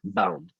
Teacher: à dire que je ne fais pas vibrer les cordes vocales le b est une sonore c'est à dire que je fais vibrer les cordes vocales